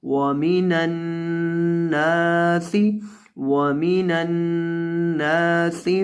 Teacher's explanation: اسے پڑھیں گے وَمِنَ النَّاسِ، ناسی، اور نون کو لمبا کرنا ہے آپ نے، کیونکہ نون کے بعد الف ہے، اور سین میں آپ نے سیٹی پیدا کرنی ہے۔ سین سیٹی والے حروف میں سے ہے۔